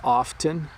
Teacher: when we speak really quickly it often sounds like we're not saying the T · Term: the T sound